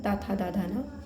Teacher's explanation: ता वर्ग का उच्चारण स्थान दंत होता है